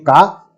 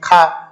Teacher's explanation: खा को बोलते समय हमको जो है अधिक वायु प्रवाह के साथ उसको बोलने के लिए अधिक वायु प्रवाह की आवश्यकता पड़ती है